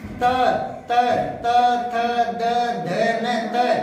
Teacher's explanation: दांतों से टकराते हैं ना, तो इनको बोलते हैं दंत्य